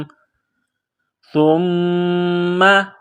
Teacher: زبان کا سرہ تھوڑا سا باہر نکالیں گے، سا کو نرم پڑھیں گے